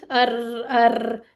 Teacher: एक अभी जो मैंने नोट किया ना यह रॉ को ना आपने गोलमोल सा नहीं बोलना इसमें वाइब्रेशन या तकरीर जो होती है ना वो आनी चाहिए